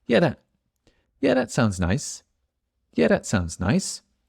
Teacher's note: So that, the noise of my tongue, I don't use it. The TH sounds more like a D.